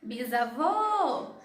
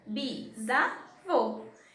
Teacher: Então, nós vemos que o vô é a sílaba tônica, até porque está com acento.